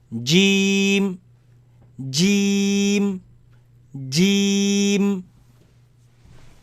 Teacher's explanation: it comes from the middle of the tongue. Middle of the tongue, touching the front palate and top roof. Right? You have the J sound in English.